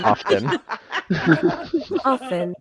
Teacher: It starts with an O, then you have FN, no T pronunciation.